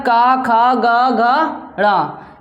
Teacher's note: का वर्ग है जो 5 अक्षर है वो कहाँ से बोले जाते हैं? कंठ से।